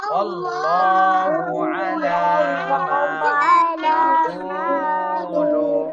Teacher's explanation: আল্লাহ শব্দের ডানে জবর, আল্লাহ মোটা করে পড়তে হবে।